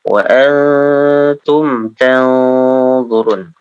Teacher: Mim sukun ketika bertemu dengan selain huruf mim dan ba jangan ditahan.